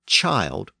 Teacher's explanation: the word chield became child with its modern long eye sound